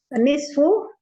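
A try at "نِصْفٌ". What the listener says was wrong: Nisfun, tanwin aja.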